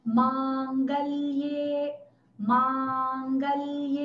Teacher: первая «а», она будет долгая, и последняя «э», которая, даже если над ней не стоит черта, «э» всегда тоже долгая. Поэтому правильно будет не «мангалье», а «мангалье».